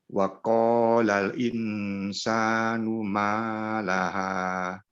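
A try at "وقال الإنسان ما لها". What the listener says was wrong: Nah, ini pada lamnya ya. Mohon dinikmati saja lamnya. Wa qalal in. Jangan cepat-cepat dipisah. Wa qalal in jangan. Wa qalal in. Qalal in.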